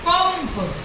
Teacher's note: क्योंकि जो हवा है, जब हम अनुस्वार का प्रयोग कर रहे हैं तो हवा हमारे नाक को पहले स्पर्श कर रही है · म बोल रहे हैं। यहाँ पर म का उच्चारण आ रहा है, न का नहीं।